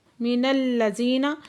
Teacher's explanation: من الذین، نون کو لام کے ساتھ ملا کے پڑھیں گے، لام مشدد ہے، سختی سے پڑھیں گے۔ زی پہ یا مدہ ہے، دو حرکت کھینچ کے پڑھیں گے۔